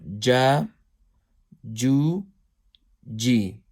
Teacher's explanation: So when we say center, meaning behind the tip, the center of the tongue, touching the hard palate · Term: jim